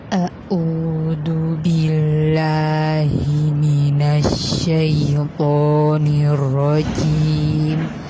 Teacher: membaca dengan sangat berat dan berlebihan, seolah-olah setiap huruf keluar dari tenggorokan. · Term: taqayyurul fam